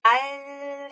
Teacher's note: 이게 뭐냐면 여기에 장애, 즉 방해를 하는 상태예요. 방해는 하고 있지만 혀 양쪽으로 공기가 이렇게 흘러요. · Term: 유음